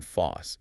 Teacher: But also think about the word force. The R is dropped and the vowel shifts sometimes resulting in foss. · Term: R dropping